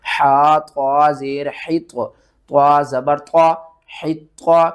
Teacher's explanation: آپ نے ہا کو آپ نے طا کے ساتھ ملانا ہے، طا حروف مستعلیہ میں سے ہے، اس کو ہم نے موٹا کر کے پڑھنا ہے،